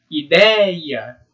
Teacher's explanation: a gente tem um ditongo, o ei, que ele é conhecido como ditongo aberto. Por quê? Porque a gente abre bem a boca.